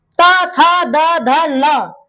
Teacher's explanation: तो ये दांत में आकर के दोनों दांतों के बीच में इसका साउंड आता है। दांतों से टच होता है। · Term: दंत वर्ण